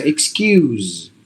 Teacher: One, it's the E sound in the beginning, not A. And here the S is in between the vowels, so you have to get a Z sound.